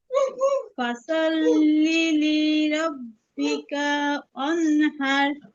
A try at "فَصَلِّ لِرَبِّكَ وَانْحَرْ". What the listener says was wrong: কা কিন্তু টান হবে না। ফসল্লি লিরাব্বিকা ওয়ানহার।